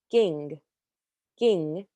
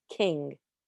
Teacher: you want to say a k but not release that much air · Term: Gaff